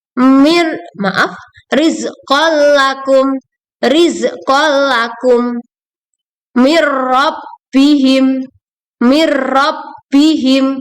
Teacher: cara membacanya dengan meleburkan nun sukun ke huruf berikutnya tanpa disertai guna atau the Nun bilagunnah tidak disertai dengan dengung contohnya disini bisa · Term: idgham bilagunnah, idgham bila gunah